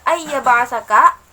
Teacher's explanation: Di sana ada ba mati yang dihukumi dengan qalqalah sughra.